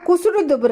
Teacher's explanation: ஓகேங்களா, இப்போ என்ன சொல்கிறாங்க அப்படின்னா குசுடு துபுரு அதாவது கசட தபரன்னு சொல்லி வல்லினம் பார்த்தீங்க இல்லையா, அந்த வல்லினத்தில் இருக்கிற உகரம் மட்டும்தான் குறைஞ்சு ஒலிக்குதுன்னு சொல்கிறாங்க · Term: குற்றியல் உகரம்